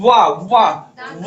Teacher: और ला, हाँ ला को बोला, ला बोलिए, देखिए दांत पे जाके जीभ टक्कर मार रही है, ला बोलते यानी कि दंत। और वाह वाह वाह बोलिए, देखिए ओठ भी सट रहा है, दांत भी उसमें प्रयोग हो रहा है, यानी कि दंतोष्ठ।